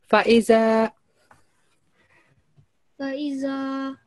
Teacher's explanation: 1 second. No, it's 2 seconds because it's fatha and followed by alif madda.